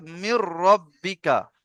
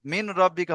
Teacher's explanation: নুন সাকিনের পরে হরফে ঈদগাম 6টি অক্ষরের মধ্যে র এসেছে, তাই নুন সাকিনকে বিনা গুন্নায় মিলিয়ে পড়তে হবে, একে ঈদগামে বেলা গুন্না বা তাম বলে।